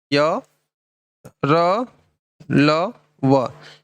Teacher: सघोष है ठीक है और इनमें एक मात्रा कम वायु निकलती है साथ में अल्प प्राण भी है